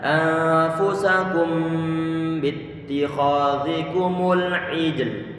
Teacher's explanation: Di saat mengucapkan kum, bibir termonyongkan, kemudian mim, kemudian disertai dengan gunnah, bibir sudah dalam kondisi datar. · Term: ikhfa syafawi